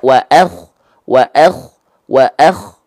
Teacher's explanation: Nah, lihat ini, ada lidah yang menanjak ke atas. Nah, ini yang disebut dengan isti'la, mengangkat bagian lidah terdalam kita ke arah atas.